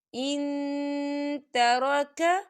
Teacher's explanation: کتب علیکم، کتب علیکم، اذا حضر، اذا حضر احدکم الموت ان ترک، ان ترک، دیکھیے ان یہاں پہ نون ساکن ہے اور نون ساکن کے بعد تا آ رہا ہے، اور تا جو ہے اکفا کا ورڈ ہے تو ہم یہاں اکفا کریں گے۔ ہم نون ساکن کی آواز کو ناک میں چھپائیں گے